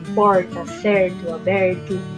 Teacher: temos aqui o R retroflexo nos finais da sílaba